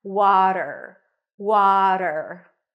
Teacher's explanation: water water a w sound then the a is in Father w w then a flap T and an R